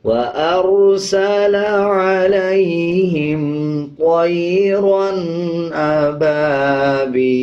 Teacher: جب وقف کریں گے تو زبر کو سائلنٹ کر دیں گے اور لام کی آواز کو آدھا پڑھا جائے گا